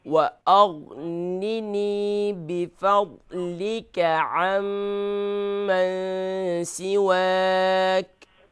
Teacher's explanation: بفضلک یہاں پر ضاد ہے، اسے فل ماؤتھ کریں گے